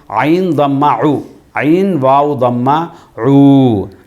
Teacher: ரெண்டாவதாக ஊ ஐன்ங்கிறது எங்களுக்கு தெரியும், தொண்டையுடைய நடுப்பகுதியால் வெளியாகக்கூடிய எழுத்து தான் ஐன்